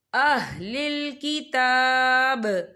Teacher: تا کے اوپر کھڑی حرکات ہے، تو ہم یہاں 2 یا 3 حرکت کے برابر کھینچیں گے